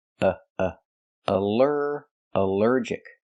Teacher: Here the al is not pronounced all but pronounced uh like in cup and up because it's not stressed.